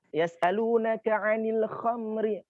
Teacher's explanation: Kha-nya kan sudah tebal atau dia punya sifat tafkhim karena dia adalah huruf isti'la.